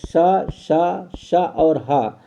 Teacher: शा, शा, शा और हा ये ऊष्म व्यंजन कहलाते हैं